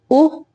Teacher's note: और पेश की होंठों को गोल करके हल्का सारा गोल करना है, होंठों को गोल करके इसकी पेश की अदायगी होती है